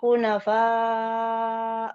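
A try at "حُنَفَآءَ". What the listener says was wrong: Itu Fanya tipiskan ya. Hunafa itu balik.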